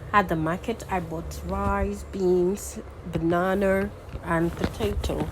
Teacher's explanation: when you're trying to say more than one items you use your Rising tone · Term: listing items